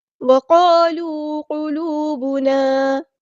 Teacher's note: قوف ہمارے heavy letter ہے، پورا ادا کریں گے، حروف مستعلیہ میں سے موٹا ہم ادا کریں گے